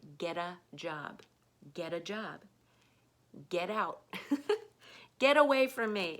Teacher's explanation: you're going to kind of automatically turn those T letters into D sounds